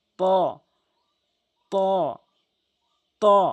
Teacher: এই 3টি হরফ জিহ্বার আগা সামনে 2টি দাঁতের গোড়া থেকে ত ত ত এভাবে উচ্চারণ করবেন।